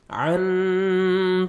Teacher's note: یہاں پہ نوز میں ساؤنڈ لے کے جائیں گے اخفا کریں گے